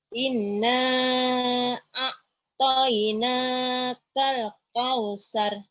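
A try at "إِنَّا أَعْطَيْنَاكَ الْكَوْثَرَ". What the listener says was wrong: Ya, ain dulu baru ain ya. A dulu baru ain. Kalau tadi langsung ke ain. Jangan. Ina alif dulu. Inna baru ke neken.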